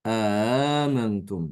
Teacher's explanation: Hamzah yang kedua itu dibaca dengan tashil